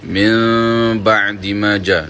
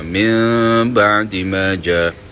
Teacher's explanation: ditukarkan bunyi nun menjadi bunyi bunyi mim